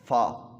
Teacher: ऊपर वाले जो बड़े दांत हैं इनको नीचे होंठों के साथ लगाएंगे